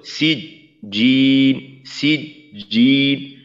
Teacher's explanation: সিজিন পরিপূর্ণভাবে বন্ধ হয়ে তারপর জিন শক্তির সাথে শুরু হবে, যেন জি এভাবে এই যে দুর্বলতাটা যে আওয়াজের একটা ঝিরঝির ভাব থাকা তেমনটা না।